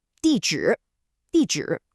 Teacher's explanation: A falling 4th tone followed by that dipping and rising 3rd tone.